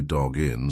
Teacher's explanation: when you've got that hard consonant followed by a vowel just push the two together like it's one word